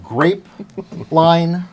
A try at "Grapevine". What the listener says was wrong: Grapevine, not line.